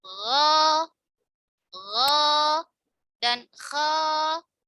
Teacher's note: Berada di akar lidah bertemu dengan langit-langit yang bagian lunak yang berwarna merah dekat tenggorokan, ya, ujung langit-langit di sini, ya. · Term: adnal halqi